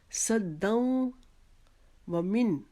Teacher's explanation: دال کے اوپر جو 2 زبر کی تنوین ہے اس کو آگے واو کے شد کے اندر ہم ملا دیں گے اور اس کی آواز کو ہم ادا کریں گے.